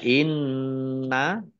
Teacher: Nun tasdid dibaca Gun atau mendengung ditahan dua harakat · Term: gunnah